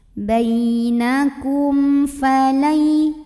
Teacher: Kum, di sini ada hukum idhar syafawi karena ada mim sukun yang menghadapi huruf fa. Maka mim sukunnya ini dibunyikan dengan jelas ya, bunyi dan tidak ditahan.